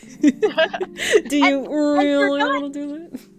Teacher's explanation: you're drawing attention to that stretched out really. And the way you're doing that is by elongating it.